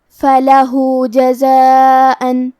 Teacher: فلح جزاء، کلمت جزاء میں الف پہ مد کا علامہ ہے، یہ مد واجب متصل ہے، اور مد واجب متصل کا معنی ہے کہ حرف المد اور اس کی وجہ جو کہ حمزہ ہے دونوں ایک ہی کلمہ میں ہو۔ اس مد میں ہم اپنی آواز 4 مد کے برابر لمبی کریں گے۔